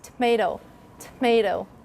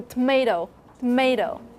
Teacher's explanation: But that schwa after the t is really, could be voiceless.